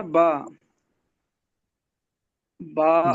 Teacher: یعنی کہ با ہے نا، با با جی اور میم یہ ہونٹوں کے ملانے سے نکلتا ہے. با میں اور میم میں ہونٹوں کو ملاتے ہیں